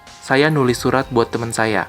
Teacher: Also notice that menulis loses its prefix, but it doesn't revert to its root form tulis. Instead, it maintains the nasal sound at the beginning. And one more small difference we can see is that the word for friend, teman, is pronounced more like teman.